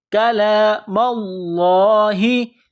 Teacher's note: يَسْمَعُونَ كَلَامَ اللَّهِ، کاف کو باریک کرنا ہے، کاف زبر کا، لام کلا زبر لا، کلام اللہ، میم کو لام کے ساتھ ملانا ہے۔ لفظ اللہ کے نام سے پہلے زبر ہے تو لفظ اللہ کے نام کو موٹا کرنا ہے